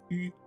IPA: y